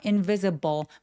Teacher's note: 여기 포인트는 V의 강세가 오는데 V 발음 앞에 바람이 확 느껴지도록